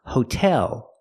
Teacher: Put the stress on the second syllable. Not hotel, but hotel.